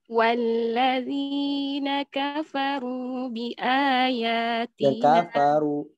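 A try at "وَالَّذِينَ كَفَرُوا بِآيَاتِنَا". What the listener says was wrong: Kafaru. Tipisin lagi. Walladzina kafaru.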